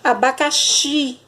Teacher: a sílaba mais forte é a última sílaba da palavra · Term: oxítona